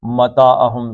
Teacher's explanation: زبر کے بعد الف آ گئی، مد اصلی ہو گیا، دو حرکتیں.